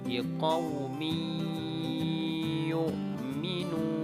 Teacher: Ketika tanwin bertemu dengan ya, miyu, tidak lagi dibaca liqaumin yu. Karena hukumnya idgham, maka dibaca secara idgham dan dibaca secara gunnah atau berdengung.